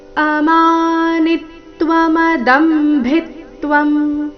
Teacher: ದ ಮತ್ತೆ ಭಿ ಮೇಲೆ ಆಘಾತ